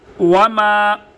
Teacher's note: وما يعلم تأويله إلا الله وما يعلم واو کو ادا کرنے کے لیے ہونٹوں کو خوب گول کیا جائے گا، جیسے کسی پائپ وغیرہ میں پھونک مارنے کی شکل میں ہونٹ گول ہوتے ہیں۔ وما میم کو ادا کرنے کے لیے دونوں ہونٹوں کو آپس میں ملا کے میم کو ادا کیا جائے گا۔ میم کے بعد جو الف ہے اس کو الف مدہ کہتے ہیں، الف مدہ کہتے ہیں۔